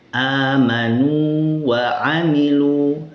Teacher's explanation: di sini tidak diidgamkan walaupun sama-sama huruf wau tapi tetap dibaca wau sini panjang dan di sini tetap dibaca wau. · keduanya harus dibaca jelas dengan kadar dua harakat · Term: wau mad